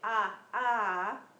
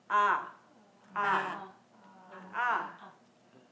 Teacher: it's a guttural sound so it comes naturally from the throat